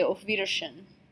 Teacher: Note that the W is pronounced like a V. Okay, all W's in German get pronounced like V, so it's not Wiedersehen, it's Wiedersehen.